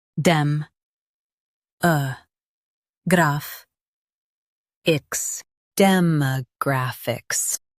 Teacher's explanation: Stress graph and keep ix clear